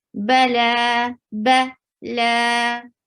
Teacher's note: Ba is short, la 2 counts long. This is just like this alif standing fatha is just like a complete alif.